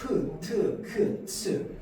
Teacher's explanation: 성대의 긴장을 줌과 동시에 숨까지 거칠게 나오는 겁니다. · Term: 거센 소리